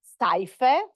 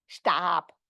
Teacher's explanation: you have the monophthongization of diphthongs